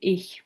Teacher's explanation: the palatal fricative occurs in ich